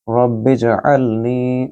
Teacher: رب اجعلنی، را کو با کے ساتھ ملائیں، را کو پر پڑھیں گے کیونکہ یہ تفخیم ہے، را کے اوپر زبر ہے، اور با کو جیم کے ساتھ ملائیں گے جب جیم ساکن ہو، یعنی کہ کتب جد میں سے جیم بھی ایک حروف قلقلہ میں سے ہے۔ رب اجعلنی، عین کو گلے سے بولیے اور نی کو لمبا کریں کیونکہ یہاں یا مد ہے